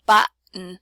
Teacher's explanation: And you can see how button, we have the wedge in the first syllable because it's the stress syllable, and then we reduce down to schwa in the last syllable